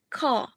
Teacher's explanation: General British the R sound is typically non-rotic means that it is not realized at the end of words